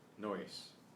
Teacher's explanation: That's just to guide you that the pronunciation kind of links the O and the S